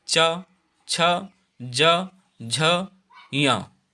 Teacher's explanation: तो चा वर्ग तालव्य, क्योंकि ये तालु पर जब जीभ टकराती है तब बोले जाते हैं।